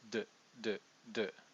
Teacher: This is your alveoli ridge right here. And so the tip of the tongue sort of strikes d, d, d, right on that ridge that you feel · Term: D tongue position